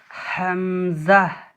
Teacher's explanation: হালাকের বা কণ্ঠনালীর শুরু হতে উচ্চারিত হয় হামজা